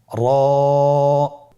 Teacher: জিহ্বার আগার উল্টা পিঠ তার বরাবর উপরে তালের সঙ্গে লাগিয়ে উচ্চারিত হয়